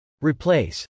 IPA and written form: r.iplˈeɪs (replace)